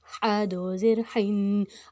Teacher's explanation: اب جو حا ہے وہ حروف حلقی ہے، اس کو ہم نے حلق سے نکالنا ہے، اس کی اگر ہم حلق سے نہیں نکالیں گے تو وہ اس کا دوسرا دو چشمی حروف والا ہا ہو جائے گا، جس کا مطلب لفظ کا غلط ہو جائے گا۔